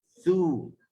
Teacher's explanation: Hujung lidah di hujung gigi atas. Bagi depan. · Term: huruf tha